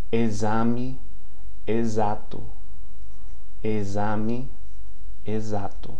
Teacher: Now, the prefix EX, okay? The prefix EX before a vowel is pronounced as the Z